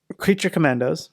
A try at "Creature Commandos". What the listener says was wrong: It's Creature. You gotta slow down, man.